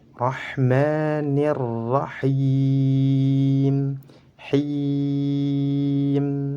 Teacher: Jadi suaranya harus dialirkan, rahma, langsung masuk ke huruf mim. Kemudian mim harus dibaca panjang 2 harakat karena dihukumi mad tabi'i.